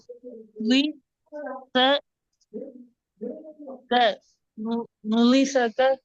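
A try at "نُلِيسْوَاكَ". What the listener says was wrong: Nuliswake. Swa sound வானத்துக்கு வரணும். Nuliswake.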